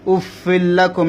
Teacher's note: জবর লা কাফ মিম পেশ কুম উফফিল্লাকুম এখানে উফিল্লাকুম হবে না তানবিনটা লামের মধ্যে ঢুকে যাবে গুন্না ছাড়া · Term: ইদগামে বেলাগুন্না